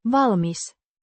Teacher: with a short I sound and emphasis on the first syllable.